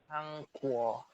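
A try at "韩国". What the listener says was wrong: Bukan Hang, tapi Han. Pakai N, teman-teman. Hankuo.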